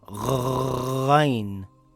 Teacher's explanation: Ghain is a heavy letter, it sounds similar to when you gargle some water from the throat